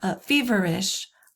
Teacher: It's stressed and then 2 unstressed syllables. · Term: dactyl